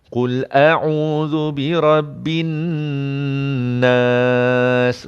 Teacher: Dan nun yang sabdu tuan-tuan kena dengung tak? Yes, kena dengung 2 harakat.